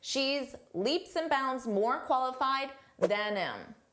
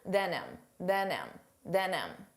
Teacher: Notice how you don't hear the H on him, than him.